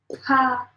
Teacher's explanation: It's like an H sound kind of coming out after. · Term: puff of air